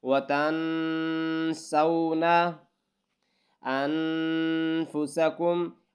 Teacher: یعنی کہ آواز ناک میں ملانی، ناک سے نکالنی ہے۔ وَتَنْسَوْنَ أَنفُسَكُمْ، انفسکم الف حمزہ اور نون کے ساتھ ملانا ہے تو یہاں پر غنہ ہوگا۔